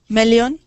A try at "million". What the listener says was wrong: So million. That is I. Million. I'm hearing million. I want to hear that I sound. Million.